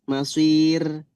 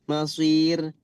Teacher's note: Kalau masir karena sebelumnya ya dan sebelumnya itu adalah huruf kasrah, sir tipis. Meskipun sebel-sebelumnya ya itu ka- fathah juga tetap dibaca tipis ra itu ketika sukun.